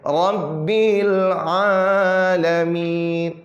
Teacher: Nah, ro-nya dia agak tebal, tafkhim ya.